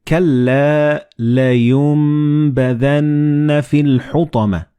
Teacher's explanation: Like in this example, you read كَلَّا لَيُنْبَذَنَّ فِي الْحُطَمَةِ. So the noon and ba, they will be assimilated together and you will pronounce them as meme.